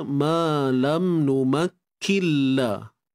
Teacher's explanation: kalau kita dengar memang tidak ada lagi huruf nun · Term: idgham bila gunnah